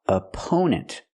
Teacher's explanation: The first syllable is a relaxed sound like cup and up. Opponent. The stress is on the second syllable. · The stress is on the second syllable. We use a long O sound like no and go for the second syllable.